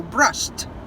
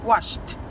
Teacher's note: Verbos que são passado com ED, mas a pronúncia é com T. Esses são unvoiced sounds.